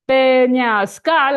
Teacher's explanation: It's called peñascal with stress at the end.